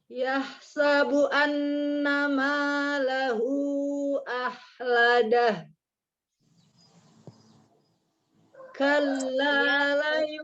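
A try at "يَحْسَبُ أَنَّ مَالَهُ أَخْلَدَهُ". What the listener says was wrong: Kurang panjang nih. Hunya kurang panjang. Hunya kurang panjang.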